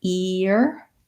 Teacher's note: The E shape, ear, is a smiling shape. And when I move from E to ear, then I get the Y sound.